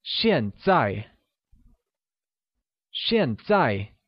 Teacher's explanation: uses a falling tone on both a's